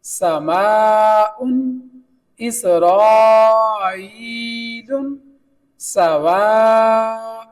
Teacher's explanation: جہاں بھی مد آئی ہے وہاں الف کی آواز کو ہم نے لمبا کر کے پڑھا ہے